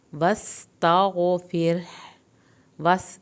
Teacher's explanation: सीन को सीटी की आवाज़ के साथ पढ़ें, ता गैन नहीं हिले, फिर रा को पतला पढ़ना है क्योंकि पीछे ज़ेर, पिछला लफ्ज़ के नीचे ज़ेर है।